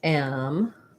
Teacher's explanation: We say it, the T makes the CH sound. Amateur. And then we just again have our unstressed at the end. · So this is different in British English and American English. In American English, first syllable stress has the A black cat vowel.